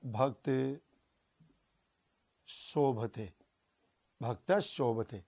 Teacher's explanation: सावकः चलती, शावकः चलती। भक्त शोभते, वही यहाँ पर विसर्ग है, विसर्ग को दंते शकार, लेकिन पीछे तालव्य शकार होने के कारण दंते शकार भी बदल जाएगा तालव्य शकार में